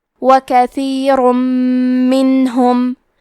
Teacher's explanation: کلمت کثیرن میں حرف ثا کی ادائیگی زبان کے سر اور اوپر کے دانتوں کے اندرونی کناروں سے ہے۔ آخری میں را پہ تنوین پیش ہے، پھر حرف المیم آتا ہے۔ · ادغام کا معنی ہے حرف کو حرف میں داخل کرنا، تو ہم تنوین کو میم میں ملا کے غنہ اور تشدید کے ساتھ یہ حکم کو ادا کریں گے